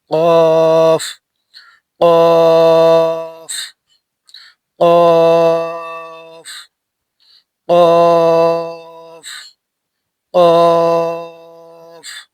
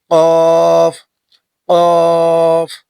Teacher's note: জিব্বার গুড়া তার বরাবর উপরের তালুর সঙ্গে লাগাইয়া, তালুর সঙ্গে লাগাইয়া উচ্চারিত হয় কফ